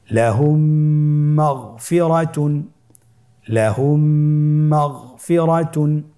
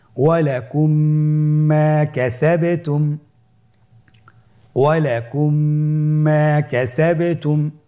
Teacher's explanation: মিম সাকিনকে পরবর্তী মিমের সাথে মিলিয়ে পড়তে হবে গুণনার সহিত